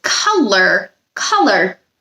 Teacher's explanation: Color sounds different than how it's spelled. It's got the schwa sound in the first syllable, ka, Second syllable is lur, which sounds like but it's not spelled the same as most other words.